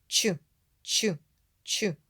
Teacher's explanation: і злегка витягнуті вперед кінчик широкого язика заховався за верхні зуби зуби не випускають звук а він проривається в маленьку щілинку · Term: звук ч